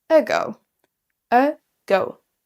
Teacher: On n'a pas un A, ago ou je ne sais quoi. On prononce quasiment la première syllabe quasiment comme un E.